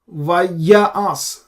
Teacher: so ya has a stress